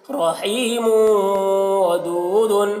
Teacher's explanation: میم تنوین جو ہے واو کے ساتھ میں ناقص طور پر مدغم ہو رہا ہے غنہ کے ساتھ. رحیم، واو زبر وا، رحیم وا، دال واو پیش دو، رحیم ودو، دال دو پیش دن، رحیم ودود، را کو پر پڑھیں گے، رحیم ودود، غنہ کریں گے.